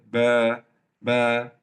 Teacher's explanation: Kalau fathah ini jadi baris atas itu jadi suara kecil, ba. Kalau ada alif, suara lebih panjang, ba, double dari fathah.